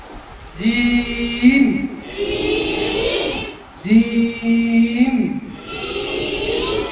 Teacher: এই জিহ্বার মধ্যখান থেকে উচ্চারণ করব